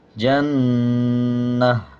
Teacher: جب وقف کریں گے تو یہ گول تا ہے، اس کو ہا میں کنورٹ کر دیں گے اور دو زیر کو سائلنٹ کر دیں گے